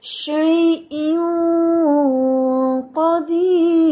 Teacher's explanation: शैइन यहाँ पे हमारा इख्फा हो रहा है और ये अदना दर्जे का है और यहाँ पर हैवी इख्फा भी है, इसलिए जुबान की जड़ भी उठाएंगे क्योंकि आगे कॉफ लेटर है जो हैवी लेटर है